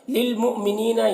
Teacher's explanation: یہاں پر حمزہ ساکنہ ہے، جھٹکا لگا کر پڑھیں گے.